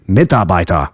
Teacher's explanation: the letter R at the end of a word is pronounced like a reduced A sound